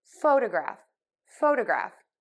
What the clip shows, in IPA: ˈfoʊdəˌɡræf